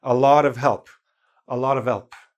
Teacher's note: So I pronounced the E a little bit stronger to make up for the weak H.